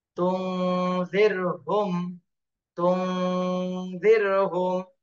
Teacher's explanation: তাহলে এই নুন সাকিনের পরে ইকফার হরফ দাল এসেছে, এই জন্য এই নুন সাকিনে ইকফা গুণা করতে হবে